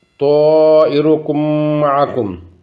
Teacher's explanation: میم ساکن کی میم متحرک نے اندر مدغم کرساں ادغام کرساں اور اس کی دو حرکات نے برابر لمبا کرساں اور غنہ نی آواز کٹساں۔ اس قاعدے نا نام ادغام شفویہ۔